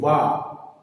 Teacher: एक प्रश्न और, वा दंतौष्ठ वर्ण है। दंतौष्ठ, दांत और ओष्ठ दोनों के सहयोग से बोला जाता है।